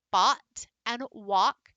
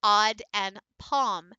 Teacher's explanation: this aw is in the back your jaw drops a little bit your tongue pulls back a little bit and it's a lot more resonating in closer to the back